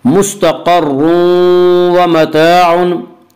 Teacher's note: मुस्तक़र्रुन व मताउन में इदगाम बिलगुन्ना होगा। इसका कायदा यह है कि नून साकिन और तनवीन के बाद अगर हुरूफ़ यरमलूल में से कोई हर्फ आए तो वहाँ पे इदगाम होगा।